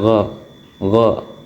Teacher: Kemudian ada gin atau gho eh sifatnya itu bunyi ee timbul keluarnya itu dari bunyi langit-langit belakang terus adanya gesekan bersuara dan terbilang tebal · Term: Ghin